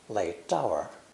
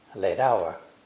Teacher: late hour a british speaker would probably say late tower but americans pronounce the t between vowels more quickly closer to a d sound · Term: american flap t sound